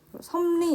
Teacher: 섭리 역시 리을이 니은으로 발음이 나고 있습니다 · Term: 비음화